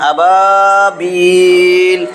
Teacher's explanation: জবরের পরে খালি আলিফ, মদের হরফ 1 আলিফ টানিয়া পড়তে হয়। জবরের পরে খালি আলিফ, মদের হরফ, এক আলিফ টান, আবাবিল।